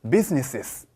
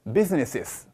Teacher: 근데 여기서 조심해야 될 게, 사람들이 놓치게 되게 쉬운 게 뭐냐면요, 원래 S로 끝나는 소리가 S가 한 번 더 붙으면은 S를 2번 발음해 주셔야 돼요